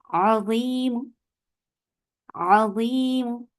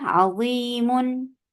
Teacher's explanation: इसमें तन्वीन की आवाज को खत्म कर दिया जाएगा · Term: अर्रौम